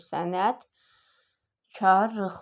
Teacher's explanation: Vurğu sonuncu hecanın üzərində düz tərkibində kar qarşısı olmayan bir dənə L samiti vardır. Biz gördük ki, tələffüzdə L yoxdur. R olur. L R-ya çevrilir.